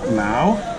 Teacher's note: This is second tone, so it goes up